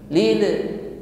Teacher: Lil lam sukun sifatnya tawassut, ya, dialirkan saja. Lil, tidak boleh dipantulkan, ya.